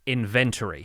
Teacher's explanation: three syllables inventory american english pronounces it with four syllables inventory i say it inventory so i put the emphasis on the second syllable